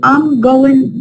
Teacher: the G at the end of all ing disappears